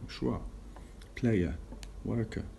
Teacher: In many accents of English, including Southern British, this final letter R is not pronounced. At the end of the word, we don't really say we don't really pronounce the R letter.